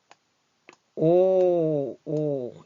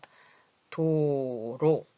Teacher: 입을 조그맣게 하면서 동그랗게 하는 소리는 오 소리죠?